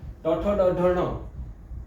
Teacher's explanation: ટ ઠ ડ ઢમાં જે આપણી જીભ પડે છે એ મૂર્ધા અડે છે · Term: મૂળધન્ય